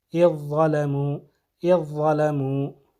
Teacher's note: ادغام کرتے ہوئے اذ ظلموا، اذ ظلموا، اذ ظلموا۔ ذال کا جو ہے اثر نہیں رہے گا، بلکہ ضا کی آواز آئے گی، اذ ظلموا، اذ ظلموا۔